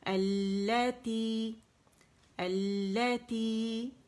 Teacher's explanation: اور پھر لام شمسی نے کیا کیا, یہاں پہ لام تعریف کا ادغام ہو گیا لام شمسی میں, تو وہ مشدد ہو گئی, تو اب اسے ظاہر جماؤ دیں گے. اور تی جو ہے یہ مد اصلی ہے, 2 کاؤنٹ کے لیے آواز نیچے جائے گی. کیسے پڑھیں گے, اللاتی.